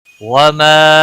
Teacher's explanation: وما الف مدہ ہے، ایک الف کے برابر کھینچ کر پڑھیں گے